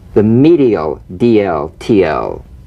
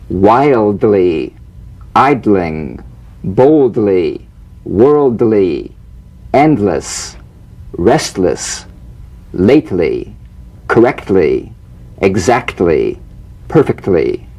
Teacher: feel the D or T click even when the L is not sustained because a vowel follows